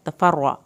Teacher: रा को पुर करना है, रा की शद भी पढ़नी है।